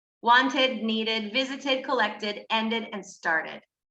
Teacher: it's pronounced like id when the final consonant sound of the verb is t or d